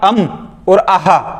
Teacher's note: जब भी आप अम और अह बोलोगे तो आपके नाक और मुंह दोनों से ध्वनियां निकलेगी। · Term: अनुनासिक